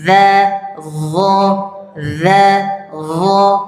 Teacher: Cuman bedanya kalau za ke a. Za. Kalau dhat ke o.